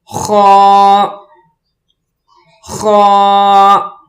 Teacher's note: اس لفظ کو پڑھنے کے لیے گلے سے آواز نکالیں گے، تھوڑی سی بیچ میں خراش بھی ہو، جیسے خا خا۔